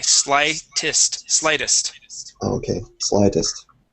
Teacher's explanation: First up, we have the word slightest. Here, that EST, okay, we're going to pronounce that like a short I. Instead of slightest, it is slightest.